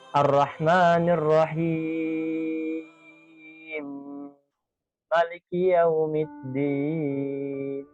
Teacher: Jadi diidghamkan kedua mim tersebut dan boleh dibaca 1 alif, 2 alif atau 3 alif. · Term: idgham kabir